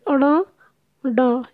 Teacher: हमारी जीभ उल्टी हुई और उसके जो आगे का भाग है उसने तालु को टच किया और हट गई। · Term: उत्क्षिप्त व्यंजन